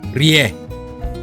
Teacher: So you bring the tip of the tongue, not really touching the roof of the mouth, and as you force air out of the mouth, the front of the tongue do vibrate and it forms this sound.